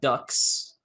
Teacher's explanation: the s is voiceless because k is voiceless